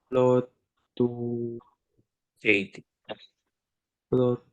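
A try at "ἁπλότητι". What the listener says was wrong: It is a long vowel. Te. T. Aplotati. So, do we add an H sound to our first syllable? Yes. Because we have rough breathing marks. How do we read this correctly? Hap.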